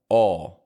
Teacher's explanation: the first part of this has your jaw opening up and your lips going round making a sound like oh